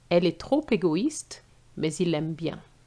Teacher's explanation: The sound is an L sound, which is a consonant sound. Since the E has no accent, is mute, therefore we're going to link the L with the E. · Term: liaison